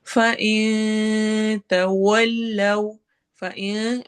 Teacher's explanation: फ़इन में नून की आवाज को छुपाएंगे